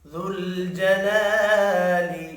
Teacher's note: ابدا ابدا ذو الجلال، ذل لام ساکن پر قلقلہ نہیں کرنا، جلا الف مدہ ہے، 1 الف کے برابر کھینچ کر پڑھیں گے۔